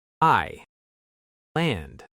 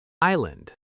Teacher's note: This word has a silent s. We don't hear it at all.